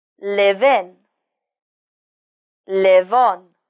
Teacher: to sound more natural you can link the final V sound with the next word